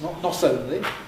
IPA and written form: ˈnɒs ˈoʊnli (not only)